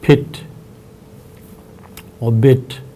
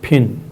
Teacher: the vowel in pit and bit is an oral e vowel and the vowel in pin is a nasal e vowel now the nasal vowel in pin is assumed to result from